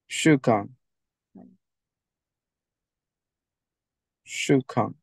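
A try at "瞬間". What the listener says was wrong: I was like, is it Shukan? Shun. It's Shun. Shun.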